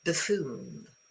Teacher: So this U is a schwa